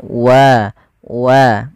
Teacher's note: untuk wau itu sebenarnya ada lebih menyempurnakan dengan memonyongkan sedikit bibir kitab ketika melafalkannya wa wa untuk menyempurnakan dan merelasikan makhraj daripada huruf wa itu sendiri.